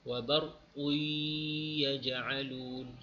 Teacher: Jadi tak bunyi dah, wa barqun. Qun tu dah tak bunyi, terus masuk pada ya.